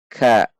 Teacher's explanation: ada dorongan udara saat mengucapkannya, namun tidak dengan terlalu. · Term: huruf kaf